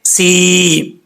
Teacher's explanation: یہاں پر یا ساکن ہے، اس سے پہلے زیر ہے، تو اس کو مدہ کر کے پڑھا جائے گا. ایک الف کی مقدار لمبا کیا جائے گا